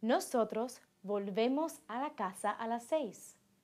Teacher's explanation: the stress in the nosotros and vosotros forms does not fall on the last stem vowel but on the ending